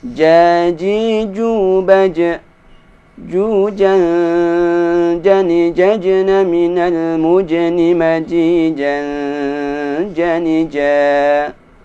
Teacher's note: Huruf jim, ini cara mengucapkannya tidak boleh disertai keluarnya nafas